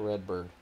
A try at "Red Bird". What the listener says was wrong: Why would you roll the R's?